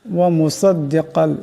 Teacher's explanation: ওয়া মুসাদ্দিকাল লিমা বাইনা ইয়াদাইয়া من التوراة وأحل لكم بعض الذي حرم عليكم وجئتكم بآية من ربكم فاتقوا الله وأطيعون ومصدقا لما بين يدي ওয়া মুসাদ্দিকাল, এখানে সোয়াদ এবং কাফ দুটার আওয়াজকে মোটা করিয়া পড়তে হবে